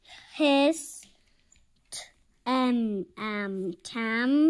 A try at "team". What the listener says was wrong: Remember EA, how you pronounce it? There's an E.